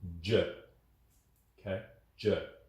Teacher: With J, I feel the muscles around my lips working much harder to make the sound.